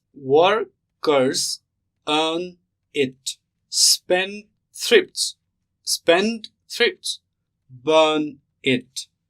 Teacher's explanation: so the pattern is stressed unstressed stressed unstressed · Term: stress pattern, trochee